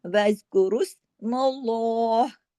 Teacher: अल्लाह के नाम में लाम हैवी हो जाता है , इसको सीधा साधा मल्ला नहीं, वज़्कुरुस मल्लाह, ऐसे अगर रुकेंगे